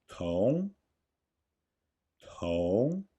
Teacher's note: Note the small explosion of air in 同